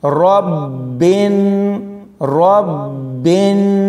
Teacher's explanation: بربن ایسے نہیں، بربن ربن، با کے اوپر شد ہے، با تشدید ہوگا، را کو با کے ساتھ ملاتے ہوئے سختی سے پڑھیں گے اور جب اس کو ملائیں گے تو تھوڑی دیر کے لیے وقف کریں گے، یعنی رکیں گے۔